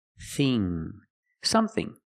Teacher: The vowel is a short sound, like cup and up, some, thing. Use the TH with no voice, and the vowel E, like green beans